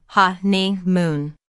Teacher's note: There are three syllables in honeymoon, with the stress on the first syllable